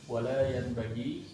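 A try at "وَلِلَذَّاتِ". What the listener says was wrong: Ya, wal lahadzati. Wal lahadzati. Bukan wala, walla. Nyambung aja, nyambung, jangan dibiar. Wal lahadzati.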